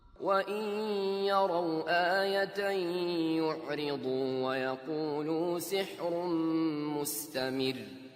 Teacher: Here the ra is light, but it's followed by a heavy dad, and that may make it difficult for you to distinguish this light ra, but it is light.